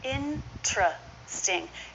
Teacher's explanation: you might hear a true T instead of the CH though the CH is more common